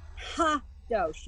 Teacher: You want to make sure you aspirate that hey at the beginning of the word.